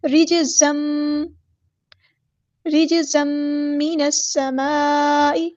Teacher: جیم ساکن کو ہم نے ہلانا ہے، قلقلہ ہو رہا ہے، زا کے اوپر جو دو زبر ہے اس کو میم میں مدغم کر دیں گے · زا کو سختی سے ادا کرنا ہے اور یہاں پہ ادغام مع الغنہ ہوگا ، ایک الف کے برابر رکیں گے، رجزم، یاد رہے رجزم